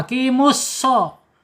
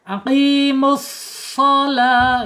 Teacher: Tetapi ini harus pakai huruf shad ya, tebal. Ya, udara mengalirnya agak sedikit terhambat karena lidahnya terangkat.